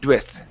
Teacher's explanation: you're going to emphasize more of the ooh than the D